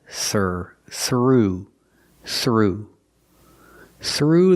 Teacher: Use the voiceless th sound plus the r sound together.